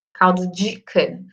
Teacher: pela minha variação linguística, eu falo como se tivesse um J junto do D.